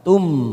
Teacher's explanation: Tum mim sukun bertemu sin idhar safawi, kita baca jelas tanpa mendengung.